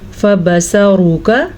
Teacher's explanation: ये फबसरूका रॉ पे पेश आई, हमने मोटा पढ़ा, फिर रॉ पे ज़बर आई, हमने इसको फिर मोटा यानी कि पूर करके पढ़ा।